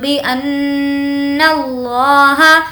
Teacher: نون پر تشدید ہے، غنہ کریں گے